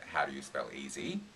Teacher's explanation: how do you spell easy the focus word is easy we stress it the most